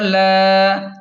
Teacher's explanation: لام کو کھینچیں ایک الف کے برابر کیونکہ الف مدہ ہے اور کاف کو لام کے ساتھ سختی سے ملائیں کیونکہ لام پر شد ہے۔